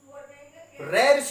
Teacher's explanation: रे ऋषि को जब हम बोलते हैं तो हमारी जिह्वा ऊपर की ओर मुड़ती है